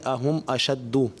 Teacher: انہوں نے ماشاء اللہ الکریم جس آیت کریمہ کی تلاوت کی، اس آیت کو میں نے ان سے 3 مرتبہ پڑھوایا کہ مجھے ایسا محسوس ہو رہا تھا کہ یہ اہم اشدو، چونکہ یہاں پہ میم ساکن کے بعد حمزہ آ رہا ہے اور یہاں پر غنہ نہیں کیا جائے گا